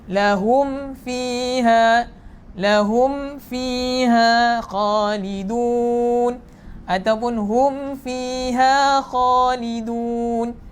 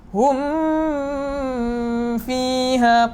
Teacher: Mim sakinah bertemu dengan fa. Baca dengan satu harakat saja ataupun jelaskan huruf mim. Lahum fiha khalidun ataupun hum fiha khalidun.